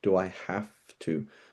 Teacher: The V is becoming an F because a V and an F are the same letter. It's just shifting from voiced to unvoiced.